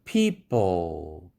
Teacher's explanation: 무성 파열음 뒤에 성절 자음의 L이 온 경우도 약하게 aspiration이 나온다. people, 뒤에 L 사운드가 오는 바람에 P가 아주 약하게 aspiration이 나옵니다.